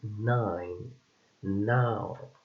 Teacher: N, which is a voiced alveolar and nasal sound